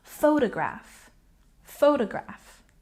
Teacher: the word photograph has a stress on the first syllable